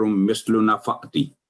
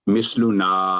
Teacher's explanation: نون کے ساتھ آگے فتح کے ساتھ الف ہے، تو نا کے بعد 2 سیکنڈ لمبی کرنی تھی